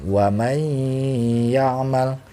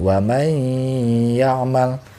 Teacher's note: Nun mati menghadapi ia maka cara membacanya didengungkan ditahan warnai ya amal dimasukkan ke hidung warnai amal kita Han 2-3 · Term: Idgham Bighunnah